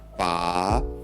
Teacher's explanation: The fourth tone is the opposite to the second sound because it's a downward tone.